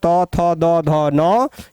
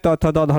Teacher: आप जब भी तवर्ग का उच्चारण करते हैं, त थ द ध न का उच्चारण करते हैं, तो जब तक आपका जीभ आपके दांत के अग्रभाग से नहीं टकराता है, तब तक आप त थ द ध न का उच्चारण नहीं कर सकते हैं। क्योंकि आपका जीभ जो है सो दांत के साथ टकराता है, इसलिए इसको हम दंत्य वर्ण कहते हैं।